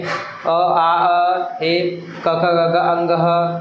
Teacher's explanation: यांचा उच्चार करतानी कंठाचा वापर होतो म्हणून याला कंठेवर्ण म्हणण्यात आलेला आहे